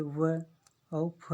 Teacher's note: दंतोष्ठ मतलब कि नीचे का ओठ और ऊपरी दांत, मतलब दांत और ओठ का जो मिलान होता है, जो किसी व्यंजन का उच्चारण करते समय अगर हमारा दांत और ओठों का दोनों तंत्रों का अगर उच्चारण स्थान में अगर साथ देता है तो हमारा दंतोष्ठी के अंतर्गत आता है।